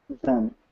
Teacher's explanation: You should notice a slight vibration on your fingers, because then uses the D sound, or the D. Remember, it's voice, so it will have some vibration.